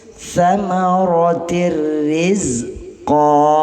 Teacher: Jadi setelah dimasukkan tidak boleh didengunkan. Jadi samaratir rizqa, ini ro-nya tipis. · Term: idgham bila gunnah